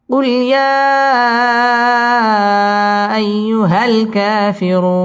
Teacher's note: মদ্দে আরজি 3 আলিফ টান দিয়ে ওয়াকফ করতে হবে